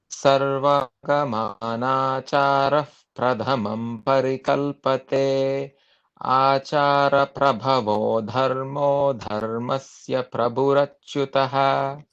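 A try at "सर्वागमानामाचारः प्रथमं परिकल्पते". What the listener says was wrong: You missed one character in the first quartlet. Sarvagamana machara.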